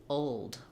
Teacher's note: What you'd want to do is lift the front of the tongue, keep the back of the tongue down. It's a little bit of a schwa sound before your L, and then add your D. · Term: dark L sound